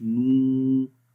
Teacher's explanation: ہم نو پڑھ رہے ہیں تو ہونٹ تو گول ہو رہے ہیں لیکن واو کی آواز کہیں بھی نہیں ہے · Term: واو مدہ